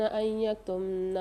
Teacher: نون ساکن کے بعد یا مشدد آ رہی ہے یکتمنا میں، یہاں ادغام کے ساتھ غنہ کر کے پڑھیں گے